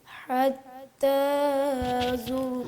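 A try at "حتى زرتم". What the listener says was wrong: حتی کو لمبا نہیں کرنا. الہاکم التکاثر حتی زرتم المقابر.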